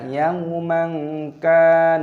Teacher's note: dibaca sebagai ikhfa, yang tersembunyi. Ikhfa artinya dikaburkan